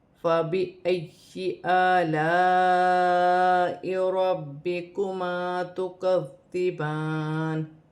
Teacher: را پر پیش ہے، را موٹی پڑھی جائے گی